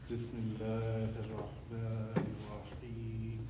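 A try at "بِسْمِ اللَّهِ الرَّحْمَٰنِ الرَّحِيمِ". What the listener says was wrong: Yeah, but there's no mad. Bismillahir Rahman. There's no mad in there.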